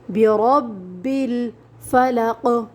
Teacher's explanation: را کے اوپر زبر آ جاتا ہے تو را کو موٹا پڑھیں گے